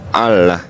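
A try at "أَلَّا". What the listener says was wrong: Nggak pakai H ya. Allah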